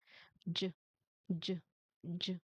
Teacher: It should be voiced meaning your throat vibrates when you try to say it.